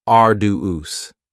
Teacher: arduous has 3 syllables, and the stress is on the first syllable, arduous. Now, you don't hear that D sound that much.